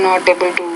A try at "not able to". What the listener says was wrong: Say not able to. When you pronounce that T, you have to pronounce it with more air and then make the vowel sound longer. Not able to.